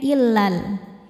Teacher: Tapi saat tidak berhenti atau wasal maka alifnya ini gugur dan lamnya dibaca pendek. illal karena ada proses namanya takhallus bil hadfi.